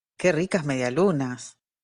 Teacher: es decir empieza abajo y termina más bajo aún en cambio las exclamativas tienen un acento tonal nuclear que se llama tritonal donde encontramos un tono bajo seguido de un tono alto y luego un tono bajo · la primera emisión es una exclamación fíjense como sube y baja el F cero